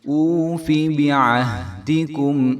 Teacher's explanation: فا اور با کو بالکل بھی ہم نے لمبا نہیں ہونے دینا